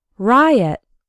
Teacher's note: Riot has two syllables and the stress is on the first one